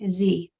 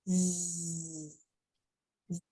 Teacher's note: Z is sustained and vibrating.